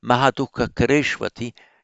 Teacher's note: Notice the final u there, followed by an a. Here we are, it becomes a v, kareshwapi, by Sandhi. And so written here, you see in the Devanagari, shwa, on this one would be shu, but it's shwapi.